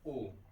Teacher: आ plus उ से ओ बनता है, तो उच्चारण स्थान अगर हम देखें, आ का पहले पता है कंठ से, उ का पता है ओठ से, ओठ, तब उसके बाद ओ का उच्चारण हो जाएगा कंठोष्ठ, कंठ और ओठ दोनों से मिलकर हो जाएगा।